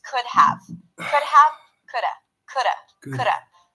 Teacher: notice that the D is really really light it sounds like a flap D like a like an r in Spanish